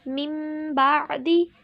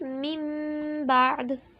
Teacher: تنوین کی آواز کو چھوٹی سی میم سے بدل کر غنے کے ساتھ پڑھیں گے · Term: اقلاب